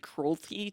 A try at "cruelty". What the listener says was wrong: Cruelty. You meant to say cruelty. You slurred your T and it sounded like cruelty.